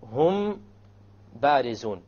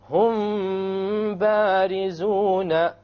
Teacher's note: when the meme is followed by a ba, you perform a ghunna, and that is called ikhfa shafawi.